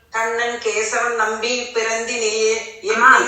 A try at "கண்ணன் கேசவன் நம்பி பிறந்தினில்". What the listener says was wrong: கேசவன் நிக்கணுமா? ஒரு கேப் விடுங்க ரெண்டுக்கும் நடுவுல. கண்ணன் கேசவன் நம்பி பிறந்தினில்